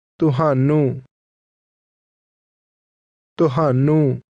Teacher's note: ਤੁਹਾਨੂੰ Is one of these words, and it is pronounced with a tone that falls to a low level.